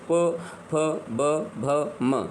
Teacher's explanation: वर्ग प वर्ग जो होता है वो कहां से आता है तो ये ओस्ट से बोले जाते हैं आप इन्हे ओठों को उठा करके जो है आप बोलते हैं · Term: ओष्ठ वर्ग